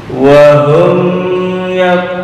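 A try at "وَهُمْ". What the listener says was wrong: Dengung, jangan dengung.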